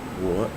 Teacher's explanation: so it goes down and back up